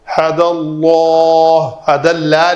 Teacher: وَإِن كَانَتْ لَكَبِيرَةً إِلَّا عَلَى الَّذِينَ هَدَى اللَّهُ، عَلَى الَّذِينَ هَدَى اللَّهُ، یہ ہدا تھا، آگے اس میں جلالہ آ رہا ہے تو ہدا کو ہدا نہیں کریں گے، ہدى اللہ، لام اس میں جلالہ کا ماقبل زبر کے ساتھ ہے تو اس کو پر پڑھیں گے، ہدى اللہ، ہدى اللہ نہیں کہیں گے۔